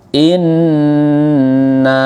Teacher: Nun bertasydid namanya ghunnah musyaddadah dibaca dengung